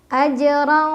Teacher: ya sukunnya sudah bawaannya cara bacanya dipantulkan dan pantulannya kecil AJ ro dibaca secara tafkhim karena ro berbaris fathah tanwin jadi bacanya tebal tebal itu artinya pangkal lidah kita naik